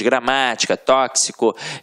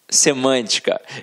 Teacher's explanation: Todos esses exemplos são proparoxítonas, porque a sílaba tônica está na antepenúltima sílaba